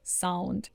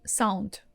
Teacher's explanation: So that's actually how you could catch some little Russian accent when Russian people are speaking English or French because we tend to make your voiced consonants, that are staying at the end of the word, voiceless